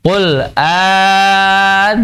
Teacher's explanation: cara membacanya, yaitu dengan dipanjangkan 6 harokat